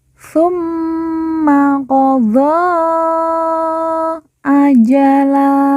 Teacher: mim yang bertasdid langsung kita tekan kita tahan dua harakat dan didengungkan